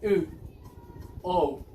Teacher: And for example, here, the back part of the tongue. U, O, in this group of vowels are called back part of our tongue because we use the high back part of our tongue